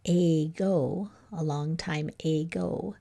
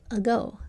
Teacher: And it'll usually say so in a word like ago, a long time ago, instead of saying a, which takes more effort, we use the laziest vowel sound of all, the one that's easiest to make, that the short U sound. And we say ago. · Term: schwa